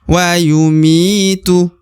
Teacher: Mi dibaca 2 harokat karena terdapat ya sukun atau ya mati di depan huruf mi ini ya. Maka mi wajib atau harus dipanjangkan 2 harokat ya.